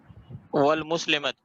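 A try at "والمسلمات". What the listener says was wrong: ول نہیں پڑھیں, ومسلمتن.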